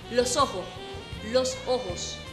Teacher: También la unión de la S final con la vocal siguiente.